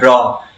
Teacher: जिह्वा के ऊपर से वायु लुढ़कती हुई बाहर निकलती है। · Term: प्रकंपित व्यंजन